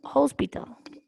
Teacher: la h suena como una j cierto es muy suave el sonido pero si se siente